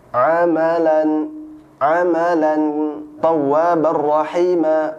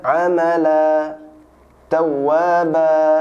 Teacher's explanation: ketika dia waqaf maka tidak dibaca tanwin lagi, jadi hilang